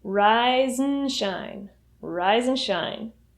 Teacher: When you say rise and shine, the and reduces to a n sound.